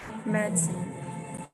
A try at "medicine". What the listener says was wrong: So, but remember, the stress syllable of medicine is med, not is. So not medicine, but medicine. Medicine. Just a little bit. Not too much, but just a little bit.